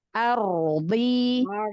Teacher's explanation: harus sukunnya tafkhim, angkat pangkal lidah.